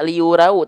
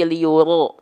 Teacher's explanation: karena dia adalah huruf yang harus dibaca tebal ketika fathah, maka bunyi vokal yang keluar adalah o.